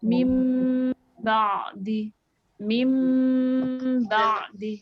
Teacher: Kemudian iqlab. Iqlab ini apabila nun sukun tanwin bertemu dengan ba, diubah menjadi suara mim dengan gunah.